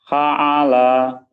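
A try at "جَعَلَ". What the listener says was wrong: ulangi, titiknya di bawah, Titiknya 3. Ulangi. Oh, atasnya.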